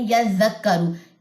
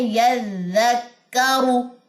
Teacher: اس والے زال میں سیٹی نہیں ہے، جبکہ را کے بعد جو زا آتی ہے اس میں سیٹی ہوتی ہے. یہ آپ لوگوں نے میک شور کرنا ہے کہ اس میں سیٹی نہیں ڈالنی، جبکہ جو ہمارے پاس را کے بعد والی زا ہے اس میں سیٹی ہے، ٹھیک ہے.